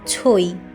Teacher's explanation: ঐ এর সাথে যেহেতু একটা পূর্ণ স্বরধ্বনি একটা অর্ধস্বরধ্বনি থাকে এ কারণে আমরা এটিকে বলতে পারি দ্বিস্বরধ্বনি